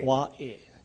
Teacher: See, the A in this last word is kind of pronounced Wa'e. This is the Okina, or the glottal stop. That's a punching sound.